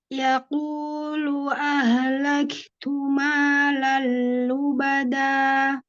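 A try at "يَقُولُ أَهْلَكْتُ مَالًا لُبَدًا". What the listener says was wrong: Masih agak kecepatan nih H sukunnya. Biarkan dia mengalir dulu Bun. Laktu.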